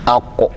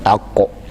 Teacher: ake samunsa a can ƙarshen harshe, aqsal lisan, sannan kuma yayi tudu sama, can ƙarshensa yayi tudun sama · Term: qaf